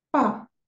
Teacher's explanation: el tono cuatro que es un tono descendente que es pa cae pa y significa papá repasamos de nuevo